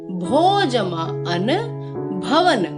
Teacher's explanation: जब ओ स्वर की संधि किसी अन्य स्वर से होती है तो अव का उच्चारण आता है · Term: अयादि संधि